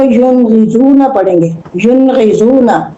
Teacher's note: نون ساکن میں اظہار میں خوب ظاہر کر کے پڑھتے ہیں، چھپاتے نہیں ہے کوئی لفظ